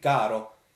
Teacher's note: So if you just treat it like a very lightly voiced consonant D, caro, it won't roll on you.